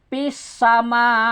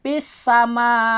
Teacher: Artinya kalau kita baca kemudian diwakaf akan terdengar ketahan napasnya. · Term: jahar